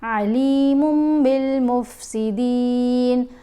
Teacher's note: نون کی آواز کو میم کی آواز میں بدل کر پڑھیں گے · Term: اقلاب